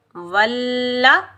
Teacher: एक बार अपने से पहले वाले हर्फ के साथ मिलाकर अदा किया जाता है और एक बार उसकी हरकत के मुताबिक अदा किया जाता है। वाव को हम लाम मुशद्दिद के साथ मिलाएंगे, बगैर खींचे पढ़ेंगे